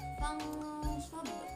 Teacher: Nah, selanjutnya hukum nun mati bertemu dengan fa, qaf, to dan yang lainnya itu dibacanya samar, yaitu adalah bacaan ikhfa.